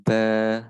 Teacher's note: Bukan dibaca ban, tapi dibaca ba, ya 2 ketukan. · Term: mat iwat